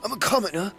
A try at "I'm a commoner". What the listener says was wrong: I feel like you're saying "come in her." Like I feel like that's what you're saying. Like that's what I'm hearing when you speak.